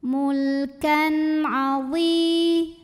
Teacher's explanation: Mulkan, kan, izhar halqi. Karena ada tanwin fathah bertemu dengan huruf ain, maka tanwinnya dibaca izhar, jelas.